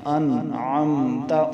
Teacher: اب یہاں پر بھی ہم گننا نہیں کریں گے کیونکہ نون ساکن کے بعد جو عین آ رہا ہے یہ حروف حلقی سے آ رہا ہے، اس لیے یہاں پر گننا نہیں ہوگا